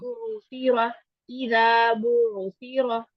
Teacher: یہ عین ہے نا حمزہ پہ جی جھٹکا ہوتا ہے عین پہ اچھا جھٹکا نہیں